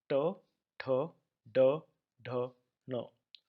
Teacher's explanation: And notice the peculiar tongue movement. The tongue touches the upper part of the mouth behind the front teeth and then is thrown out.